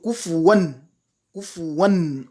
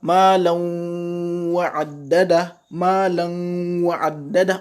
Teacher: On entend le nun. Alors qu'en bas, malan wa'addada. Malan wa'addada. On n'entend pas le nun. Quand je fais izhar dessus, ça devrait être malan wa'addada.